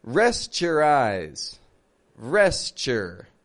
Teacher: We reduce the OU in the middle to be just a schwa sound